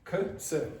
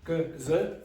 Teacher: K, s, no vibration. G, z, vibration.